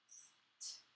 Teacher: Now, this was an unvoiced tongue tapper.